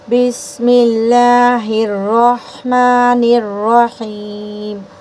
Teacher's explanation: ہا کو را میں ملاتے وقت را موٹی کریں گے